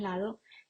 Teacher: fricativo dental sonoro, como en lado